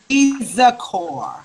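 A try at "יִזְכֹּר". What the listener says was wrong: Yizkor. Not Yizak. Yizkor. Yizkor. Yizkor. Remember that you won't pronounce that Zayin because that Sheva's underneath it. Yizkor.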